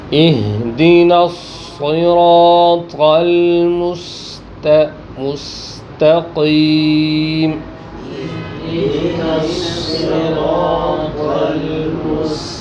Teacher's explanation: فرق کہاں سے ہوگا کہ تا میں آپ نے زبان کو اوپر نہیں اٹھنے دینا، اور قاف میں فوراً زبان اوپر